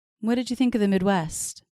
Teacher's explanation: Midwest stresses on the second syllable of that word